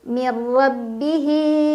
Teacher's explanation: ro dibaca secara tafkhim karena ro berbaris fathah jadi bacanya tebal tebal itu pangkal lidah kita naik